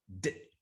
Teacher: my lips are already anticipating the e sound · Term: co-articulation